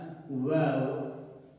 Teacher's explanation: Vav hərfini isə tələffüz edərkən dodaqlar dişlərə dəymədən qonçalma düşüb tələffüz olunur.